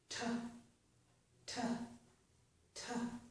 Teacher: That means with my tongue there, I completely stop the flow of air momentarily, then I release it forcefully. · So I'm spitting out the air, it's forceful. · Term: stop plosives